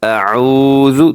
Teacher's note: اعوذ تھوڑا سا لمبا کر کے کیونکہ واو مدہ ہے